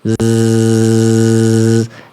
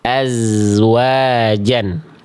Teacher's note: Maka Zai gak boleh keluar angin. Dia hanya desisannya dengan mengalirkan suara.